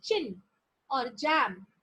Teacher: produced by complete closure followed by slow release which results in friction if active articulator is move removed slowly from the passive articulator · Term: affricates